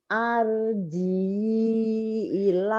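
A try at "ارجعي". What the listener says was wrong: Irji'i. Oh, itu ir ya, dibacanya ir. Bukan ar tapi ir. Irji'i.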